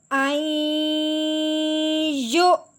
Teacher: اب ہم نے یا کو حمزہ کے ساتھ ملانا ہے، وہ بھی جھٹکا دیتے ہوئے